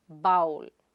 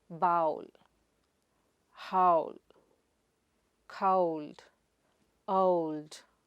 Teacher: It's a and oo sound together as ow.